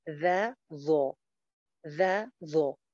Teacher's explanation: غو جو ہے یہ موٹی پڑی جاتی ہے، زال باریک ہے. تو ذا اور غو، ذا غو، ذا غو.